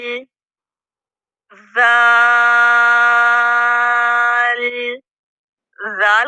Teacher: जुबान की नोक या जुबान का सिरा जब दांतों के किनारों को लगेगा तो जाल अदा होगा यह भी नरम हरूफ है